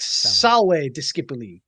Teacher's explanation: the V's in Latin tend to have a W sound. So it'll be like salve discipuli.